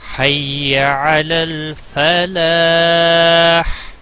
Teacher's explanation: یہاں پر لاسٹ پہ ہا ہے وسط حلق والا، یہ ادا ہونا چاہیے. اس کی حرکت نہیں، البتہ ہا نکلنا چاہیے وسط حلق والا.